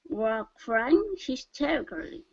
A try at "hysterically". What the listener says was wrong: Now we don't want to pronounce the AL. The L yes, but the A no.